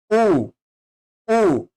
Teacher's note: ठीक है, भाषा विज्ञान के जो ऊ है वो बेसिकली आपके इसमें आएगा, पश्च में आएगा, पीछे से बोला जाता है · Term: पश्च स्वर